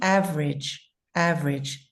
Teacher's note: We say it more like 2 syllables instead of 3.